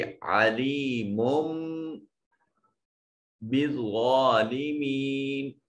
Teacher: अलीमुम, अली में या साकिन माकबल मकसूर या मद्दा है, और मुम में देखिए मीम के ऊपर तनवीन है, बा हर्फ इकलाब यहाँ है, तो इस नून तनवीन को इस छोटी मीम से बदल देंगे और मीम की दो पेशों को इस मीम से मिलाएंगे।